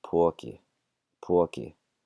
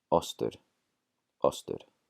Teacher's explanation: it's going to be a really drawn-out O